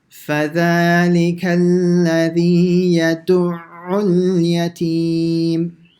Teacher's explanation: Okay, now here the ayn, in order to say the shadda correctly, you have to stop on the ayn for about half a second.